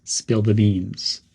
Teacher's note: Keep the word the quick and connected to beans.